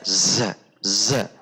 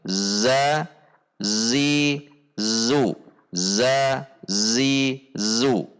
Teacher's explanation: Ketika berharokat dibunyikan dengan tidak mendorong udara, yaitu tidak z, itu mendorong udara. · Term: al-jahru